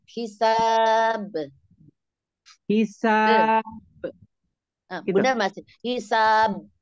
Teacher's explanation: untuk huruf ba itu jangan jangan dimingkem ya karena dia kan mantulan aja hisab hisab hisab masih mingkem jangan his langsung lepas his ya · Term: kolkolnya